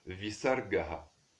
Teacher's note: Ce son est considéré comme une voyelle, c'est l'expiration sourde.